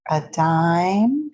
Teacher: a dime goes up and held out and stressed